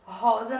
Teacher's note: rosa não tem acento, mas nós podemos identificar falando que o ro é a sílaba mais forte